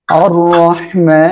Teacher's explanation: র অক্ষরের উপরে জবর আসছে মোটা করে পড়বেন হাটা গলাটা চেপে পড়তে হবে মিমের উপরে খাড়া জবর রয়েছে এক